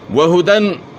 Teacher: ہا کی اواز گلے کے اخر سے ہے